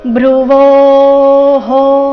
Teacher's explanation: ಬಂದು ಸೌಮ್ಯ ಆಘಾತ ಮುಂದೆ ಭ್ರುವೋಹೋ ಭ್ರು ಸಂಯುಕ್ತ ಅಕ್ಷರ ಇದ್ದ ಕಾರಣ ಭ್ರುವೋಹೋ ವೋ ನಂತರ ಇರೋ ವಿಸರ್ಗದ ಉಚ್ಚಾರಣೆ ಇಲ್ಲಿ ಹೋ ಎಂದು ಬರಬೇಕು